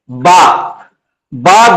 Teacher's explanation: बा दोनों होठों के जरिए से अदा हो रहा है।